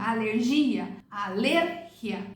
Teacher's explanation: a forte é o lé, não é o gia